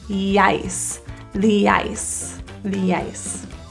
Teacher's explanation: Transitioning E to ice for the ice, you'll notice there's a bit of a yeah sound, like a Y sound, that helps us to link. So instead of ice, think of it as yice, the ice, the ice.